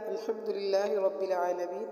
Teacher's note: سورۃ فاتحہ کی پہلی آیت الحمدللہ رب العالمین میں ہم نے حا کو حلق سے نکالا، للہ لفظ اللہ کو باریک پڑھا، اور رب العالمین کے رو کو پر پڑھا یعنی موٹا پڑھا، اور عالمین کا عین کو بھی ہم نے حلق سے نکالا۔